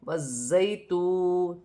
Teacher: واو ساکن سے پہلے پیش ہے تو واو مدہ بنے گی، اسے ایک الف کی مقدار کھینچ کے پڑھا جائے گا۔ یا ساکن سے پہلے زبر ہے تو یا لین بنے گی، اسے کھینچا نہیں جائے گا۔ زا مشدد ہے، سیٹی والا حرف ہے، جماؤ کے ساتھ ادا کیا جائے گا، جیسے والزیتون۔